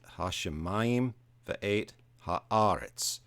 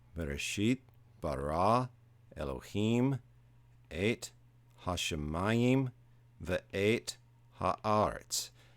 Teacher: hashemayim and haaretz, they both have an accent on the next to last syllable, and the Masoretic accent falls there.